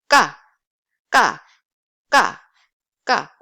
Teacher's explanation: A lot of air is coming out, and tense sound, your glottis constricted, and air building behind, and instantly you just pronounce the sound. 까, 까, 까, 까.